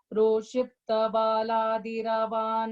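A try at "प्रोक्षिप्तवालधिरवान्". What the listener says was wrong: இல்ல vala adiravang அப்படிங்கற. So you should either say val adiravan or you should say val adiravan. it's just one la is only there. There is no extra anything there. So it's just prochipta valadiravan. அந்த valadiravanல தான் mistake பண்ண நீ.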